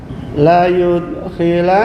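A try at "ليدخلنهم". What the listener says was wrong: La yud qalqalah. Kurang dengung.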